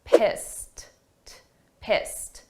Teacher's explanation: this is an ED, a past simple verb, but the sound of that ED is a very soft T.